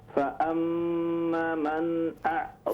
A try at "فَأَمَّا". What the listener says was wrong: فأما، الف کو لمبا کیجئے، فأما من